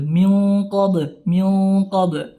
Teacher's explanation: nun sukun bertemu qaf ya, ikhfa hakiki tapi tebal ya, dikasih tebal